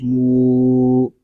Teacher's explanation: میم کو ہم ایک الف تک کھینچ کر پڑھیں گے کیونکہ یہاں پہ واو مدہ ہو رہا ہے۔ واو مدہ اس لیے ہو رہا ہے کہ واو ساکن سے پہلے پیش آ گیا ہے۔